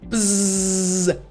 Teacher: of your mouth the roof of your mouth but you're vibrating so even in your throat you should feel the vibration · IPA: /z/